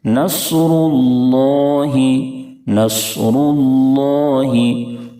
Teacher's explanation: صاد کو اگر پر نہیں کیے تو سین سے بدل جائے گا